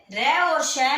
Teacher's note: र और श में जो आवाज निकलती है मूर्धा से निकलती है